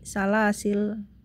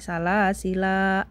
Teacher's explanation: cara membaca salasila adalah alifnya tidak dibaca saat wqaf berarti menjadi salasil Nah kalau tadi riwayat satibiah kan ada dua bacaan boleh salasila